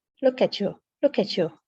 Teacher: Americans tend to pronounce the T sound as a ch, a chu.